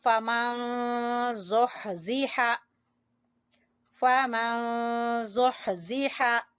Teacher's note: پڑھتے ہیں فَمَن زُحْزِحَ، فَمَن زُحْزِحَ، ہا وسط حلق سے نکالیں گے. ٹھیک ہے، ہا کا مخرج وسط حلق، گلے کا درمیان والا حصہ